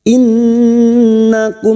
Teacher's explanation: Nun yang bertasdid gunnah musyaddadah kita dengungkan selama 3 harakat.